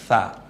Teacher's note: সাতা যেমন আমরা বলার সময় সটা ব্যবহার করি, ঠিক সেভাবে এই সাটা নরম আওয়াজে হবে। জিব্বার আগা সামনের দাঁতের আগার সাথে মিলিয়ে নরম আওয়াজ সা।